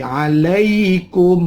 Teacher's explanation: Yursilis sama'a alaikum. Ada ya mati. Sukun, ya sukun, sebelumnya ada fathah, namanya mad layin.